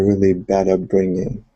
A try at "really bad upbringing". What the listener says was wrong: Good. All right, much better. Much better. Yeah, everything else sounded really good.